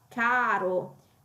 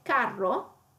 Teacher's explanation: la R singola viene dopo una A lunga, caro, mentre carro, invece la doppia R viene dopo una vocale breve